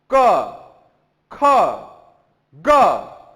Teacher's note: जो सबसे ज्यादा प्रेशर लग रहा है वो कंठ पे लग रहा है, इस गले पे लग रहा है। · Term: क वर्ग